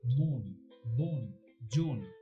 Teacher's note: একাক্ষর শব্দের প্রথমে অ এবং পরে দন্তন্য থাকলে কোথাও কোথাও সেই অ এর উচ্চারণ ওকারের মতো।